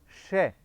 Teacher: श में जीभ की जो नोक है वो मूर्धा के टच करेगी, यहाँ टच करेगी।